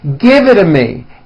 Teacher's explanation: the only big change comes from the t's being pronounced as D's and this happens because the T T's fall between two vowel · in American pronunciation when T's fall between two vowels they become voiced and are pronounced as D's